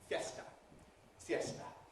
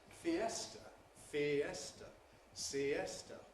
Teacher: In Spanish, they’re pronounced as two syllables each, /fjesta/, /sjesta/. In English, they’re pronounced as three syllables